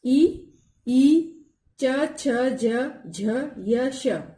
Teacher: जिनका उच्चारण तालु से होता है। ई, ई, च, छ, ज, झ, य, श, ये सब तालव्य व्यंजन है।